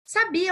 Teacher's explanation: Sabia é um ditongo crescente, porque o I vem antes da vogal, a semivogal vem antes da vogal. Então, ela tá aqui baixinho e vai crescer, tá?